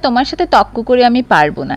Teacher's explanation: এই যে তর্কটাকে আমি তক বলছি এই যে রেফটা বা রটা হারিয়ে যাচ্ছে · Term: র কার লোপ